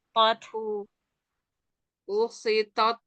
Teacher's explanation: Taknya jangan kuat. Ada hams ya.